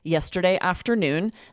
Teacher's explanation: it would be strange and disjointed to have a pause between yesterday and afternoon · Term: thought group